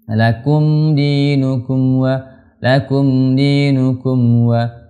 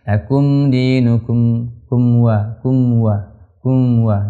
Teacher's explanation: Hati-hati kalau ketemu mim sukun setelahnya ada huruf waw atau huruf fa, itu pastikan mim kita sempurna rapatnya, ya, sempurna hurufnya.